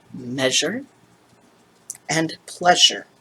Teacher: the sound that happens when you have your lips pursed to say s and then make the z sound through them